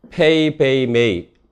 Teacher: 바이레비얼은요. 두 개의 입술이 붙어서 나는 소리고요. 페이, 베이, 메이 이 소리에 들어가 있는 프브무가 바이레비얼에 해당됩니다.